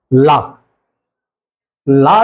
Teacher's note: ला वर्ण जो है दंत मूल या पार्श्विक कहलाता है। उच्चारण स्थान इसका दंतमूल है और वैसे इसकी स्थिति क्या है, पार्श्विक।